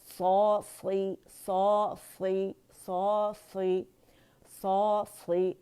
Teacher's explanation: اور صاد جو ہے یہ موٹا لیٹر, اس میں اتباق ہے, زبان تالو سے لپٹ جاتی ہے تو یہ کسرہ کے ساتھ بھی موٹا ہی پڑھا جائے گا